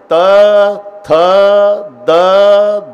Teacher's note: संबंध जिभेचा दाताशी येतो ते दंत्य आहे